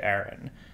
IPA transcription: æɹɪn